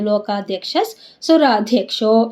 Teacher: ಕ್ಷ ಮುಂದೆ ವಿಸರ್ಗ, ವಿಸರ್ಗದ ಮುಂದೆ ಸು ಇದೆ, ಅದಕ್ಕೆ ಏನಾಯ್ತಲ್ಲ ನಮಗೆ ಅರ್ಧ ಸ ಆಯಿತು